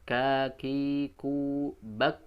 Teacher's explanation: Ketika bak, maka terasa dia dari lidah ya, belakang ya, atau pangkal lidah. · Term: huruf kaf